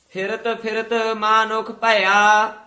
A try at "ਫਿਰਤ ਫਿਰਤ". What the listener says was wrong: ਫਿਰਤ ਫਿਰਤ ਨਹੀਂ ਕਹਿਣਾ, ਫੱਫਾ ਸ਼ੁੱਧ ਬੋਲਣਾ ਹੈ। ਫਿਰਤ ਫਿਰਤ ਮਾਨੁਖ ਭਇਆ।